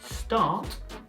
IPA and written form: stɑːt (Start)